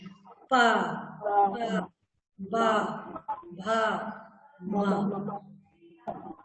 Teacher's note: दोनों ओठ एक दूसरे को टच कर रहे हैं और हवा निकाल रही है। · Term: पा वर्ग